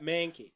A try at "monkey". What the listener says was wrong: There's too much of a pause.